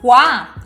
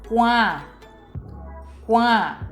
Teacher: É muito importante distinguir o som oral (kua, kuaa) do nasal (kuã)